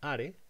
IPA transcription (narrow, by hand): ʔaɾe